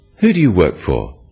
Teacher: in English use a falling tone it sounds friendlier